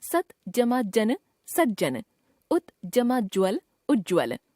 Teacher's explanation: जब त के बाद ज या झ हो तो त ज में परिवर्तित हो जाता है